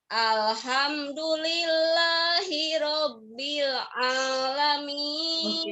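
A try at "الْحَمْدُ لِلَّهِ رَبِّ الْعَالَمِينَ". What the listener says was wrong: Oke, ainnya jangan lupa ya.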